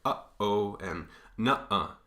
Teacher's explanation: This is called a glottal stop, and you get it in words like, in between words, you get it like uh-oh and nuh-uh. Right in between those two sort of syllables, you get a stop.